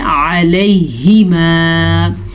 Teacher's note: عین کے مخرج کا دھیان رکھیں، حلق سے نکلے گا اور حلق کے درمیان والے حصے سے نکلے گا. اکثر لوگ پڑھتے ہیں علیہما.